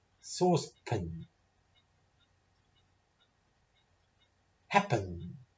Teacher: jump from the p to the end jump over the a